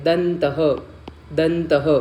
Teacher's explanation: द च्या पुढे कुठलं व्यंजन आहे तर त आहे मग त वर्गाच जे अनुनासिक व्यंजन आहे ते काय आहे तर नसिकातल न